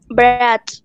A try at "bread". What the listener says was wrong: La A no se pronuncia.